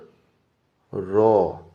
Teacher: র ধ্বনিটি উচ্চারণ হওয়ার সময় কম্পনের সৃষ্টি হয় জিভে, তাই এটি একটি কম্পিত ধ্বনি।